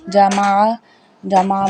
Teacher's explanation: عین جو ہے وہ عین حلق کے درمیان والے حصے سے ادا ہوتا ہے جسے ہم بولتے ہیں وسطی حلق